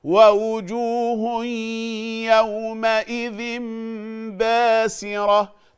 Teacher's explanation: الإقلاب فيه غنة حركتين